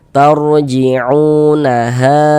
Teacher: Panjangnya mad jaiz munfasil itu dibaca dipanjangkan 4 sampai dengan 5 harakat.